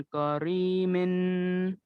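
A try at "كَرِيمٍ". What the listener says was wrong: काफ मोटा नहीं होता है, करीमिन। तो यहाँ पे गुन्ना किस में होगा? जी, तनवीन में, लाम के नीचे जो दो जेर के तनवीन में गुन्ना होगा।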